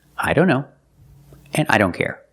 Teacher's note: here the t is between consonants so we don't pronounce it